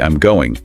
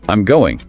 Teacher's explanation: flatly I'm going it's just a statement but I'm going with that voice going up at the end turns it into a question